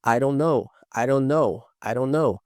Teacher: veja que esse D, ele tem um som de R.